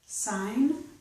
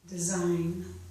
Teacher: it's s, sign. Here it's z, design.